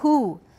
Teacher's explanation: the letter U looks like it should be rounded, but it's only who that's rounded here, and it's not written with a U. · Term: rounded vowel